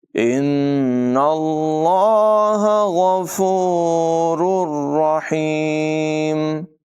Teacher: تنوین کے بعد را حروف ارمالون میں سے ہے، ادغام ہوگا، ملا کر پڑھیں گے لیکن غنہ نہیں ہوگا · ہا حلق کے درمیان والے حصے سے ادا کیا جائے گا